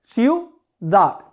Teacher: tengo la sílaba débil I, la sílaba débil U, forma una sola unidad en la pronunciación, ciudad. Por lo tanto, tiene dos sílabas. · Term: diptongo